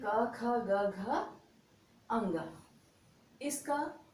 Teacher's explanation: जब इसका उच्चारण करते हैं तो यह हमारे कंठ को स्पर्श करता हुआ मुख से बाहर आता है। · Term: क वर्ग